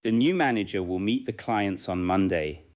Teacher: The strong beats may be new, manager, meet, clients, and Monday. The smaller words fit between the beats.